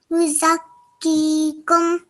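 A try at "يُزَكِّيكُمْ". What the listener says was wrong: Okay, make sure you're stretching this for a bit longer, okay? So about 2 seconds. Yuzakkikum.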